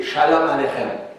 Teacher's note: C'est un CH qui se prononce dans le fond de la gorge, là, qui sonne comme un R un peu.